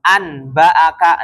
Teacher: yang tadinya Nun diubah menjadi mim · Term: iqlab